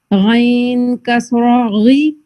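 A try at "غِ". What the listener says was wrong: नहीं, कसरा में आपने फिर रा के लिए भी इसको राउंड करने के लिए ना रा को ऊपर मूव किया, वो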